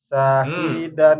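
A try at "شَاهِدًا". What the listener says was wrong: Sya. syahi. Nah, syanya belum. Tengah lidah dia. Sya, sya, sya.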